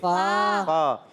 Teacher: فا کا مخرج اوپر والے دانتوں کے کنارے جب نیچے والے ہونٹ کے تر حصے سے لگتے ہیں تو ادا ہوتا ہے فا